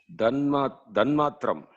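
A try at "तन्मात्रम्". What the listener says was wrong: Tanmatram, not the. It is ta. Ta, dha. Here, tanmatram. Not dhanmatram. It is tanmatram.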